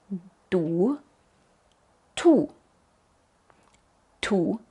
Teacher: ponemos la lengua en la misma posición como la d Tal vez un poquito más por atrás pero hay más presión antes de soltarlo y puedes sentir otra vez este fuerte movimiento de aire to